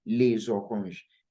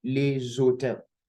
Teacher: I'm pronouncing les oranges now because orange, okay, starts with vowel sound. So we can do what we call liaison there